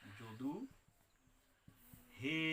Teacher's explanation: এই যে হের পরে এ ডাকটা টেনে উচ্চারণ করছে। এই টেনে উচ্চারণ যেহেতু স্বরবর্ণ উচ্চারিত হচ্ছে, এই টেনে উচ্চারণের জন্য এটাকে বলা হচ্ছে প্লুত স্বর।